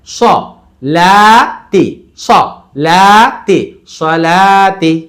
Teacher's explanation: সলা, স মোটা বাট তাড়াতাড়ি, লা খাড়া জবর, ওয়াও no sign no sound, কোনো উচ্চারণ হবে না, তাজের তি, তাহলে স লা তি, স লা তি, সলাতি।